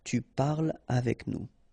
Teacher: so no liaison here between parle and avec